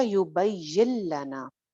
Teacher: नून की आवाज़ दरमियान में से ख़त्म हो रही है क्योंकि यहाँ पे इदगाम हो रहा है, नून साकिन के बाद लाम है ना यरमलून में से, तो ये हो जाएगा युबय्यिन लना।